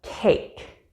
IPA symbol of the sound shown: eɪ